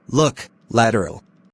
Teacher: Lateral approximatized body of the tongue lifted to upper gums and end of the tongue near alveolar ride, and airflow passes through the gap on the side.